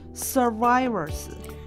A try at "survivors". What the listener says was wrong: Survivors. Survivors. It's hard to say the V in Chinese.